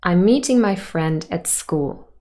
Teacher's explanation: meeting friend and school would be stressed in that sentence · content words are stressed, and those are meeting, friend, and school, because they carry the main information of the sentence. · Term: tonic stress